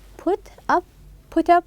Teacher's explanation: We will link them as if they were one word. Then we are going to stress the second part.